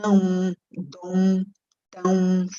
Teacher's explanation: quando a gente tem a nasal no final, né, como não, dom, tão, você escuta a U aí no final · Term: ditongação